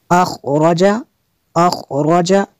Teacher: خا کو پر کرنا ہے اور را کو بھی پر کرنا ہے